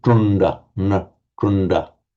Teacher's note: with a dot under the D to indicate that it's the retroflex d sound, and automatically the nasal before it will become subglossal